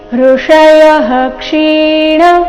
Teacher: ಇದು ವಿಸರ್ಗದ ಅಪವಾದ ನಿಯಮವಾಗಿದೆ. ವಿಸರ್ಗದ ನಂತರ ಕ್ಷ ಬಂದರೆ ವಿಸರ್ಗದ ಉಚ್ಚಾರಣೆ ಹ ಎಂದು ಬರಬೇಕು. ಅದಕ್ಕಾಗಿ ಇಲ್ಲಿ ಋಷಯಃ ಕ್ಷೀಣ ಈ ರೀತಿ ಬಂದಿದೆ.